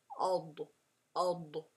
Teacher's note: Even though it is a letter that has Jahr, remember, Jahr, where you are not letting air flow through